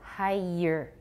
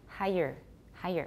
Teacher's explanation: If you hear a y in there, that's suggesting quite strongly that is two syllables. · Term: linking y